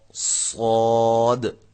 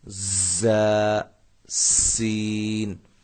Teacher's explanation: صاد کی جو سیٹی ہے یہ موٹی ہوگی، زا اور سین ان کی سیٹیاں جو ہیں وہ سیٹی کی جو آواز ہے وہ باریک ہوگی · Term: سیٹی کی آواز